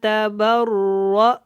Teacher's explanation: را کو لمبا نہیں کرنا، موٹا پڑھنا ہے